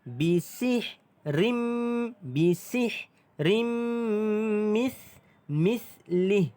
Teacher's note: Tanwin bertengah min idgham ma'al gunnah didengungkan 2 harakat. Masuk dan dengung. Bisih rim. Bisih rim mislih.